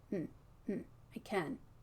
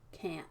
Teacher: And the N is just a little bit longer because I'm not feeling that nasal stop of the NT.